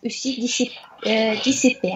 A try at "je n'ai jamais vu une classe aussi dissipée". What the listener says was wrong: Alors, dites bien les U. C'est je n'ai jamais vu. Il faut bien dire les U, pas les OU. Par exemple, et je n'ai jamais vu Une classe aussi aussi dissipée.